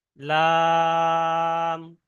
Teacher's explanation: 3 আলিফ টান দিয়ে পড়তে হয় লাম